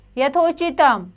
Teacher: यथा में आ की ध्वनि है और उचतम में उ तो यानी कि आ जमा उ क्या बन गया ओ